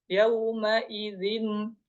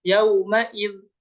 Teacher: huruf nun yang terdengar pada tanwin hanya terdapat pada ucapan dan bukan pada tulisan dia hanya terdengar saja kemudian terbaca ketika wasal namun tidak secara wakaf